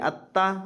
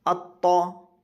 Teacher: دونوں کا مخرج ایک ہے لیکن فرق کیا ہے؟ تا باریک ہے، طا پر ہے